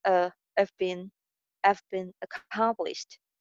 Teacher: Have ka jo H sound hai, usko clearly pronounce nahi kiya jayega.